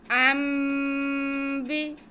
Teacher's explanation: नून साकिन के बाद बा आ जाए या तनवीन के बाद बा आ जाए तो हम नून की आवाज़ को मीम में बदल कर पढ़ते हैं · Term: इकलाब